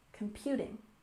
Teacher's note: we put a stress here on the second syllable in Computing